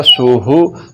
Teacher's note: اگر پڑھ دیا سوہو تو اب یہ ہا نہیں پڑھا جا رہا بلکہ وہ ہا پڑھا جا رہا ہے جو کہ حلق کے نیچے والے حصے سے نکلتا ہے، تو یہ غلط ہے۔